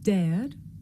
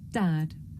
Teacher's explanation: Some learners may find it difficult to tell the difference between this sound, air, and another sound, the short vowel, a.